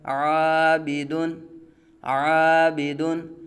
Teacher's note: الف سے پہلے عین باریک حرف ہے، الف کو باریک پڑھا جائے گا۔